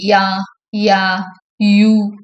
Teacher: And it is a வாய்ஸ்டு sound. Hence யா is a வாய்ஸ்டு பேலட்டல் அப்ராக்சிமெண்ட்.